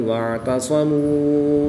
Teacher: عین کی ادائیگی کا خاص خیال کریں گے۔ صاد حروف مستعلیہ میں سے ہے تو اس کو پر یعنی موٹا پڑھیں گے